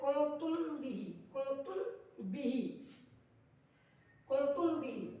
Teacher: با ہے تو میم ساکین کا اخفاء شفوی ہوگا، یعنی گننا کر کے پڑھیں گے